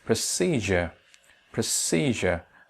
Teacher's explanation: it's a three syllabic word and the middle one is stretched